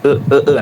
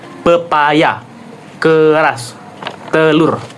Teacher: lidah pada posisi netral di tengah ya, tidak di bawah, tidak di atas. Bibir netral, tidak bulat, tidak tersebar. E e e nah nih setengah nih sedang mulut setengah terbuka. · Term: vokal madia tengah